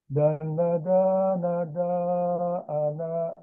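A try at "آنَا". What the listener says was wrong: Panjang A-nya. A yang ini panjang. Awas ini, walaupun tidak ada tanda panjang alif, tetap dia dibaca panjang. Karena hakikatnya dia ada alif. Ya, hakikatnya ada alif.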